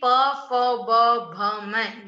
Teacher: कहाँ से बोले जाते हैं ये? ओष्ठ से, यानी होठों से बोले जाते हैं, इसलिए इसका उच्चारण स्थान होगा ओष्ठ